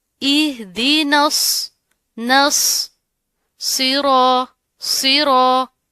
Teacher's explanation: را کے اوپر زبر ہو تو را موٹی پڑی جاتی ہے · چونکہ اس کے اوپر تشدید ہے اس لیے ان دونوں حروف کو ہم ملائیں گے، لیکن یہ جو نون ہے اس کو آپ نے موٹا نہیں پڑھنا. صاد موٹا ہوگا، نون باریک ہوگا